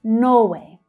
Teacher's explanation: So for 'Norway', you'll hear the first syllable stressed it's much louder and much stronger than the second one.